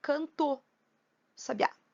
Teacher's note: O A, por ser uma vogal, ele se juntou com o O por ser uma vogal também.